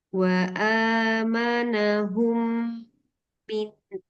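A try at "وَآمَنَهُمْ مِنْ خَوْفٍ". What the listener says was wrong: Masyaallah. Sudah bagus.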